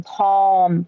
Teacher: But for words like palm, we don't touch our tongue to the roof of our mouth to make the L, or to the back of our teeth like we do normally with an L, or to the front of our teeth. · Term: dark L